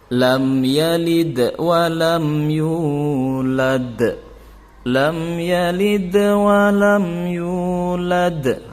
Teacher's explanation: untuk yang qolqolah kubro yang di ujung kalimat itu pantulannya sedikit lebih besar daripada yang sugro atau ditengah